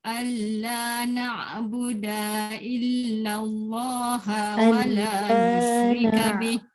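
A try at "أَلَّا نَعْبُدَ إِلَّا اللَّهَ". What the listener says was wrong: alla na'buda illallah. Da tak boleh panjang juga. Da pendek aja.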